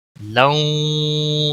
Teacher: تنوین کے بعد حروف یرملون کا واو آیا ہے، ادغام با گنہ ہوگا